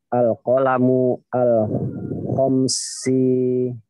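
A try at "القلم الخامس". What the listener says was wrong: Fa itu panjang. Al-qalamu Nah, al-qalamu al-khamisu.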